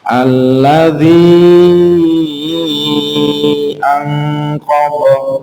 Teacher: Nah, karena itu mad jaiz munfasil. Jadi lebih baik dibaca 5 harokat.